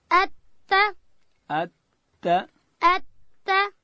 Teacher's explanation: تا ادا کیږي د ژبې سر به د لوړې زامې د مخ د دوو غاښو و بیخو ته ورولو. ات ات ات. او د تا اواز سیدی اغه نری دی چې تواجن جوړه نسی.